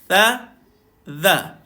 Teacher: Cara dia adalah lidah tuan-tuan kena duduk dekat bawah gigi atas.